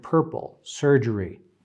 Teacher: In other words, according to our book, and going back to the original chart, according to a book, this sound right there is both stressed and unstressed. And it sounds like an R, but it stands for a vowel, a schwa and an R, like in the word purple, surgery, and all the others that we've seen.